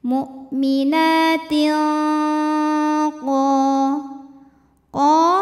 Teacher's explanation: Karena ada tanwin kasrah menghadapi huruf qaf. Cara bacanya tanwin disamarkan ke qaf disertai dengung. Dengungnya besar, masuk langsung ke pangkal lidah. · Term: ikhfa hakiki